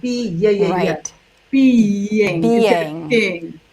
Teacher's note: a vowel at the end of one syllable, vowel at the beginning of the next, and the other is being with a Y sound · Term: secret Y's